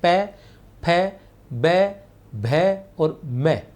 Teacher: ओष्ठ्य में पै वर्ग आता है जिनका उच्चारण होठों के स्पर्श से होता है, ओष्ठ के स्पर्श से होता है, जैसे पै, फै, बै, भै और मैं।